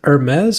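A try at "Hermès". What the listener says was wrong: Hermes. It's a silent H. No, it's Hermes.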